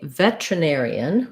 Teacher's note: with the stress on the air syllable in the air diphthong